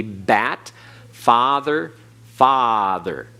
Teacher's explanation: the ah sound and so when you have ah this way it's the same as the ah and father but it is sometimes drawn out a little bit longer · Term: extra long